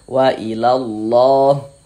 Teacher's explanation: huruf lam jalalahnya dibaca tebal, dibaca tabim, tebalkan. Wailallah. Di sini ada alif lam setelahnya huruf lam. · Kalau ada lafaz Allah sebelumnya ada harokat fathah atau ada harokat domah seperti ini, maka lafaz Allahnya, huruf lam jalalahnya dibaca tebal, dibaca tabkhim, tebalkan.